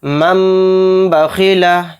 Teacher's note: اس نون کو میم سے ہم بدل کر غنہ اور اخفا کے ساتھ پڑھیں گے۔ یعنی نون نہیں پڑھا جائے گا، نون سائلنٹ ہو جائے گا۔ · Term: اقلاب